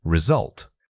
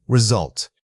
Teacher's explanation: Pay close attention to that little schwa sound in the middle. It's not a full vowel. It's just a brief dip of your voice.